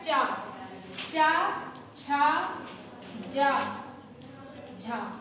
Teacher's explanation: ये तलवे और जीभ की सहायता से बोले जाते हैं, इन्हें कहेंगे तालु।